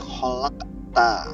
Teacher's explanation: Kalau ini salah satu ada huruf qalqalah tapi berharokat sukun dan berada di tengah-tengah yaitu qaf, maka membacanya memantul tapi mantulnya itu gak tebal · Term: qalqalah sughra